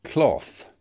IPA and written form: klɒθ (cloth)